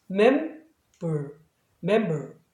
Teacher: 예를 들면 뭐 이렇게 되면은 이때 얘는 자음이 아니에요. 그러니까 리을 발음을 하시면 안 되고 반모음 발음인 어로 하셔야 돼요